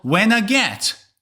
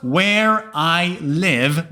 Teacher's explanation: The Northern English accent usually does not say the I sound and instead says ah, something like car, ah.